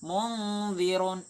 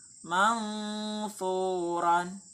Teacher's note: dia itu getarannya dia agak ke ng dan juga dia agak ke ny